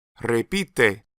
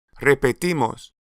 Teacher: When the stress moves to the ending, the stressed I is gone, and in its place is an unstressed E.